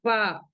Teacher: ऊपर के दोनों दरमियानी दांतों के किनारे और नीचे के होठों की तरी से फ आदा होता है। यानी जो हमारे फ्रंट वाले टीथ है जब हम फ बोलेंगे तो हमारे अंदर का जो लिप्स का गीला वाला हिस्सा है वहां पे हमारे टीथ टच होंगे।